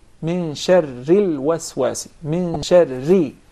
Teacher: Then if we pronounce the ra with the vowel kasra, it becomes ri, min sharril waswasi, min sharri. So the ra becomes very soft, very thin. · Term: tarqiq